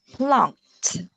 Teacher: so for those words with ed at the end, so we usually read it with t sound at the end, like plunked.